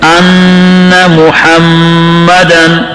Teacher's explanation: ان کی جگہ انا پڑھتے ہیں, نون کا زبر کھڑا کر کے, یہ غلطی ہے